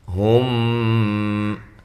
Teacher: یہاں میم ساکن کا اخفا ہو رہا ہے